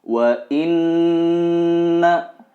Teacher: harus ditahan 2/3 harokat dan didengungkan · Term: guna